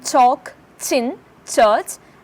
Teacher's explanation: the air coming from the lungs is blocked first but released with an audible friction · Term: affricates